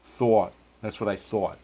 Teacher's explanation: when you get to New York, it tends to be more rounded.